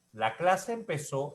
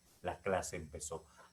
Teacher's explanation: la clase empezó es ascendente lo puedo volver descendente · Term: función distintiva de la entonación